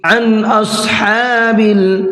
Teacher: यहाँ पर नून साकिन है और नून साकिन के बाद में हमजा आ रहा है, तो यहाँ पर नून की आवाज़ को जाहिर करके पढ़ना है। जाहिर करने का मतलब ये है कि गुन्ना इख्फा नहीं करना है, औत को पुर करके पढ़ना है।